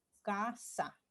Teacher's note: Es una consonante oclusiva velar sorda, ¿no? Por su punto, modo y acción de las cuerdas vocales.